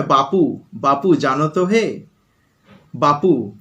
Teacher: যেমন ধরো বাবু শব্দটাকে অনেক সময় বাপু, বাপু জানো তো হে, বাপু, অর্থাৎ ব যেটা ছিল ঘোষ ধ্বনি হয়ে গেল প, অঘোষ ধ্বনি হয়ে গেল, অর্থাৎ অঘোষ ধ্বনির দিকে চলে গেল, তখন সেটা হচ্ছে অঘোষী ভবন।